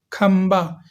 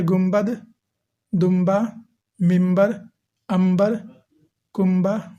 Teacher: جب بھی نون ساکن ہو اور اس کے بعد با آئے تو اس نون کو میم سے بدل کر پڑھتے ہیں، جیسے کھمبا، یہاں پر نون ہے لیکن اس کو ہم میم پڑھیں گے، کھا میم زبر کھم، بے الف زبر با، کھمبا۔ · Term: نون مقلوب